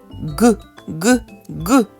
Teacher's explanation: його вимовляємо зустрічаємо перешкоди ґ ґ ґ в клубочкі ниточка рветься ми його не можемо протягнути проспівати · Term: звук ґ